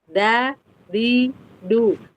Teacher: Kalau da itu dia tidak ada aliran nafas. · Jadi dal itu dia jahr dan syiddah.